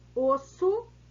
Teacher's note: o chamado plural metafônico, caso em que a pronúncia da vogal tônica é fechada no singular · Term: plural metafonico